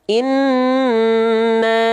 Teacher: antara bunyi al, ya, dengan bunyi mu nggak boleh ada jeda. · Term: lam sukun